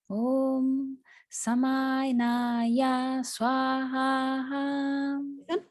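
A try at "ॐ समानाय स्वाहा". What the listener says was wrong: So you got first you got short samanaya swaha. You can make it shorter than you do.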